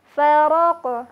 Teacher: ketika huruf qaf dilafazkan dan huruf qafnya berada dalam keadaan sukun, maka huruf qafnya akan terdengar memantul · bunyi pantulan huruf qaf adalah seperti terdengar bunyi O